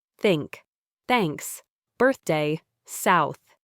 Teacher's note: It's purely air passing through, a soft whisper of air. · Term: voiceless th